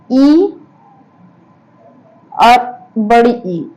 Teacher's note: इ और बड़ी ई इसका तालु होता है